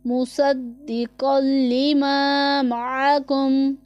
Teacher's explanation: عین حلق کے درمیان والے حصے سے ادا ہوتا ہے